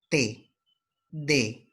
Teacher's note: Dentales, en este caso la lengua se ubica detrás de los dientes.